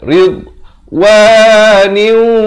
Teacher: Dha ni makhrajnya di tepi lidah.